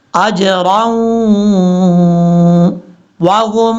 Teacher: रा को जब वाव से मिलाएंगे तो यहाँ पे इदगामी यरमलून का गुन्ना हो रहा है।